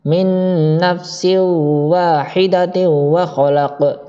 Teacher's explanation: Sin berharokat kasroten bertemu wawu atau tak marbuto ketemu wawu yang berharokat kasroten juga, dan dia langsung dengung, dimasukkan langsung ke huruf wawu atau huruf yang di depannya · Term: idgham bi guna